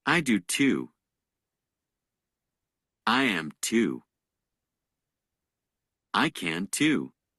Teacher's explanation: Notice how the last word of each response is stressed. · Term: stress in responses